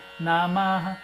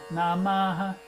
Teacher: eu repeti o Namaha, só que é um A muito fraco, não é um Namaha, como a gente fala.